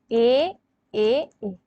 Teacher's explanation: যে তিনটে এ উচ্চারণ করছো হে টাকে ভেঙে এ তাহলে এই এই যে স্বরটাকে যাকে টেনে উচ্চারিত করা হয় তাকে আমরা বলি প্লুত স্বর